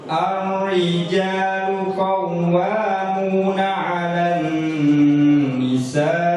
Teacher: Ar-rijalu ra, karena diawali huruf A sehingga bacanya tebal. · Jadi ditebalkan agak seperti mengucapkan o. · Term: Tafkhim, tafkhim